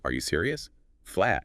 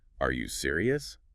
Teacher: It barely sounds like a question. But add that little upward flick at the end